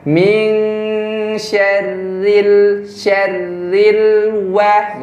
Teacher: jadi ro ini tipis. Ya, tipis. Jadi lidahnya turun saja.